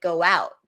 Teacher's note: And my lips even make a W sound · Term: glides